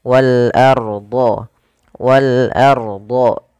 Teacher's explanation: ro yang dibaca dengan tafkhim, yaitu dibaca dengan tebal. Ketika adanya ro sukun didahului dengan fathah.